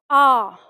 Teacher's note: अब ये कंठ से बोला जाएगा आ और इसे हम खींच के बोलेंगे